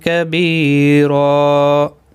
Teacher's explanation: را الف مدہ بنے گا. وقف کی صورت میں دو زبر کو بدل کر ایک زبر کے ساتھ وقف کریں گے. ایک الف کی مقدار کے برابر کھینچ کر پڑھیں گے. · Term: وقف بالابدال